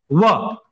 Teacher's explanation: दंत और ओष्ठ से होता है व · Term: व ध्वनि